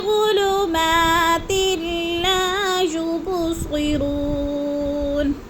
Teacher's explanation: 2 سے تنوین ہے، آگے لام مشدد تو ہم نے تا کو لام کے ساتھ ملا کر ادغام کرنا ہے